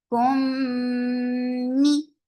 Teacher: So keep the sound in your nose for a longer time. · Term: gunna kamila